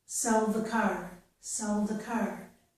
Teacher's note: If I say sell by itself, without this word, I'll put my tongue tip on the ridge behind my teeth. But if I say sell the car, I can very easily, and usually do, put the tongue tip on the teeth because of the TH